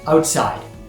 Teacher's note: The emphasis is on the second part of the word